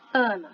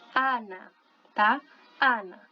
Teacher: Você abre bastante o A, mesmo com aquele N ali do lado. Então, o A do espanhol é sempre aberto.